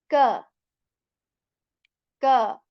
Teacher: So the first alphabet, kaf, is actually articulated when the back part of our tongue, it touches the soft as well as our hard palate above.